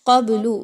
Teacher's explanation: با پر جزم کا نشان ہے، آپ نے با کو قلقلہ کر کے پڑھنا ہے، کلیئر نہیں پڑھنا